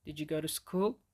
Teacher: As you can hear, I raised my pitch at the end of the sentence, and this is obviously a question. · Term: raise our pitch